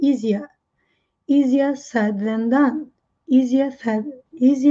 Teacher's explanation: britânicos não falam o retro Flex no final